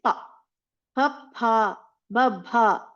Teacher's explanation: when only the lips are used in making the sound that becomes oshia that is pa babha like that okay so if you know where exactly your tongue should be placed then your pronunciation will be perfect as the acharas have given us.